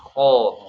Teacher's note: Itu makhrajnya di sini. Tapi pangkal lidahnya harus naik gitu ya. Jadi tegang tuh ya. Makanya bunyinya tebal. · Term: istila